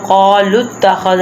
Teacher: ان اللہ واسع علیم وقالوا اتخذ اللہ ولدا اب قالوا اتخذ اللام تا کے ساتھ تشدید کی وجہ سے اٹیچ ہو رہا ہے، جیسے کہ واو کے اوپر کوئی حرکت نہیں، اس لیے ہم واو کو نہیں پڑھیں گے، ہم لام کو تا کے ساتھ اٹیچ کریں گے